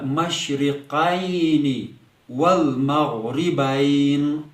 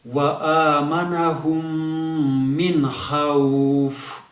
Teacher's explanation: جب ہم وقف کریں گے فصل کریں گے تو قصر کے ساتھ یعنی کمی کے ساتھ ہم مد کریں گے، یعنی کھچاؤ ہم کم رکھیں گے حروف لین پر